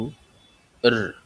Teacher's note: র এর গলার ভিতর থেকে একটু উচ্চারণ করতে হবে